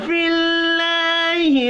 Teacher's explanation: اللہ کا نام زیر کی وجہ سے باریک پڑھا جائے گا